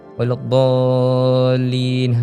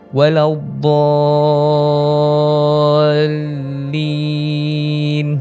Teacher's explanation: Bila nak sebut dallin, dia mesti ada macam naik sikit. Dia jangan kita baca mendatar waladdallin, jadi tak tepat lah. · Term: mad lazim kalimah musaqqal